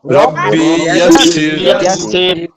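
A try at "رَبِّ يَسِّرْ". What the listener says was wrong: এখানে একটু টান হয়ে গেছে, এখানে টান হবে না। রব্বি ইয়াসসির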